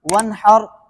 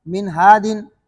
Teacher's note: نون ساکن کے بعد ہا ہے، اس میں اظہار ہوگا، غنہ نہیں ہوگا